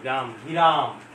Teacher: গ এর সাথে এ কার আসছে অতিরিক্ত, কিন্তু এটা আসলে হবে গ যোগ এ। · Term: মধ্য স্বরাগম